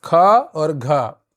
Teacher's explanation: 2 4 महाप्राण होते हैं, इन्हें बोलने में अधिक श्वास निकलती है।